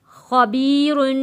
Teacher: خا کو بھی موٹا پڑھیں گے اور را کو بھی موٹا پڑھیں گے اور را کے اوپر غنہ ادا کریں گے۔